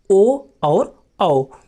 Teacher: कंठोष्ठ, अर्थात किस वर्ण का उच्चारण कंठ और ओठ दोनों जगह से किया जाता है, तो कंठोष्ठ में आते हैं दोस्तों ओ और औ।